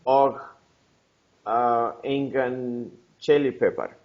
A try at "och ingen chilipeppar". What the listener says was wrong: Yes, very good.